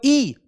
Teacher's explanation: जब ई बोलते हो तो आपकी तालू पे जोर पड़ता है। तालू जानते हो ना, जो जीभ का इसके ऊपर वाला भाग है। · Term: तालव्य